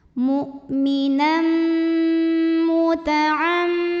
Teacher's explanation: Cara bacanya dengung, bunyi m-nya tahan sampai ada getaran halus ke hidung. · tanwinnya masuk ke mim. Mu'minam serta didengungkan, bunyi m-nya tahan. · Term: gunnah musyaddadah